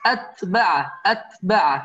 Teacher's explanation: ما بدنا قلقلة في التاء، بدنا همس بس